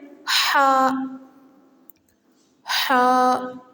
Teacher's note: حلق کے درمیانی حصے سے حا ادا ہوتا ہے